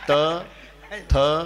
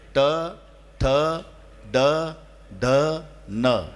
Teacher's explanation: उच्चाराच्या वेळेला मला दाताला लावून दाखवा जीभ नाहीतर टाळूला लावून दाखवा ते मध्येच लागणार दाताच्या थोडी वर टाळूच्या थोडी खाली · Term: मूर्धन्य